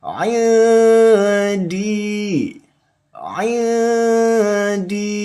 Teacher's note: Yang disamarkan itu huruf nun sukunnya yang disamarkan membacanya ya. Nun sukunnya yang disamarkan membacanya, kemudian didengungkan dua ketukan atau dua harokat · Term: ikhfa